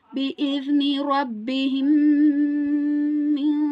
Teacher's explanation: Here we have mim sakin, and after mim sakin we have mim. So here we need to merge both the memes and then perform ghunna. بإذن ربهم من. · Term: idgham shafawi